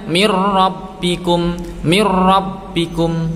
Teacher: membacanya dimasukkan ke huruf ra tanpa disertai dengung. Jadi enggak boleh mir rabbikum, enggak boleh. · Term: idgham bila gunnah